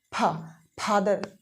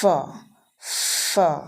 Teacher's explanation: इसकी साउंड होती है लेबियोडेंटल, जैसा कि मैंने बताया था अर्लियर। लेबियोडेंटल का मतलब होता है एक लिप और एक टीथ